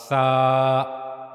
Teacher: اس کے بعد سا کے بارے میں ہم نے پڑھا کہ زبان کی نوک کا اوپری سرا، اوپری حصہ، یہ جو زبان کی نوک کا اوپر والا حصہ ہے یہ اوپر کے 2 اگلے دانتوں کے کناروں کے ساتھ جا کر ملتا ہے تو پھر سا ادا ہوتا ہے، سا۔ زبان کی نوک کے سرے کو آپ اوپر کے جو 2 اگلے دانت ہیں ان کے کناروں پر رکھیں گے تو وہاں سے سا ادا ہوگا